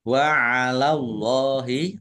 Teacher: Allahnya dibaca tebal karena harakat di depannya fathah. Lam fathah berdiri mad thobi'i panjang dua harakat.